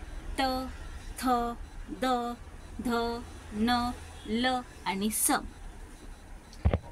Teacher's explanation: जिभेचा दातांना स्पर्श झाल्यावर उच्चार होणारे वर्ण. आता जिभेचा दाताला स्पर्श होतो आणि तेव्हा या वर्णाचा उच्चार आपल्या तोंडातून निघतो. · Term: दंत्य व्यंजन, दंत व्यंजन